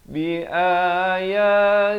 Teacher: Kalau sebelum perkataan Allah datang baris kasrah macam ni, baca nipis.